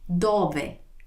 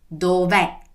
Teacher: When I say the first one, my mouth is more closed at the end. When I say the second one, my mouth is wide open at the end. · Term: closed E